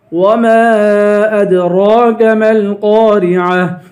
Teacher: میم کو لام سے ملا کر قاف کو پر پڑھیں گے، قاف کے بعد الف ہے، الف حروف مدہ ہے، اسے ایک الف کے برابر کھینچ کے پڑھیں گے ، را کو باریک کریں گے، عین کی آواز نکالیں گے، · گولتا پہ جب وقف کریں گے تو گولتا کو ہا پڑھیں گے